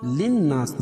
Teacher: للناس نون مشدد ہے، اس میں غنہ کریں گے